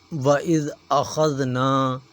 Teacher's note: نون الف نا ایک الف کے برابر کھینچیں گے، چھوٹا سا الف آپ کو اوپر نظر آ رہا ہوگا، یہ جو ڈنڈا نیچے مڑا ہوا ہے اسے الف کہا جاتا ہے، اس لیے اسے ایک الف کے برابر کھینچیں گے۔